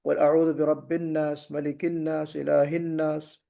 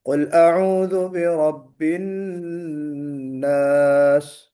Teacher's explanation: قل اعوذ برب الناس ملک الناس الہ الناس، یہ چیز مناسب نہیں ہے، غنہ کرنا ہے۔ نون مشدد، نون کے اوپر جب تشدید ہو تو ہمیں غنہ کرنا چاہیے